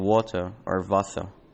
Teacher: both British English and Standard German drop the R in water or Wasser, while American speakers do pronounce the R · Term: Non-rhoticity